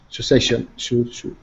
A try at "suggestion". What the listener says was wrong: Suggestion. Not sue, but sa.